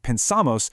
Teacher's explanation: in a word like pensamos, the stress actually moves to the ending, so there's no trigger and therefore no change.